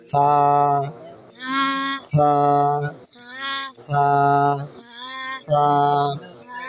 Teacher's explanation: জিহ্বার আগা সামনে উপরে দুই দাঁতের আগার সঙ্গে লাগে